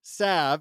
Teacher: In my experience, salve has been most commonly pronounced salve, and he puts S-A-V in quotes, with a short vowel sound shared by the A in apple and a very silent L.